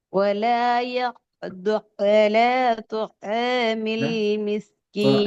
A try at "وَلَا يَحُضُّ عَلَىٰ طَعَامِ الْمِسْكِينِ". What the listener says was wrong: طعامل طعامل பழைய மாதிரி தான் வருது. நீங்க என்னதான் ஐனை உச்சரித்தாலும் ஐனை தனியாக ஓதினால் அது ஐன் பிழை. துஆமில் துஆமில் என்றா அது பிழை.